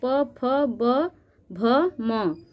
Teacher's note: प वर्ग के अंतर्गत प फ ब भ म, ये 5 ध्वनियां हमारे ओठ के स्पर्श द्वारा बोली जाती हैं, इसलिए इसको ओष्ठ ध्वनि कहते हैं।